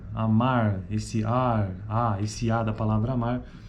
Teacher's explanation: Já é classificada como uma vogal baixa, central, que fica entre arredondada e não arredondada.